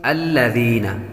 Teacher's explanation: ذال کے اندر سیٹی کی آواز نہیں آئے گی،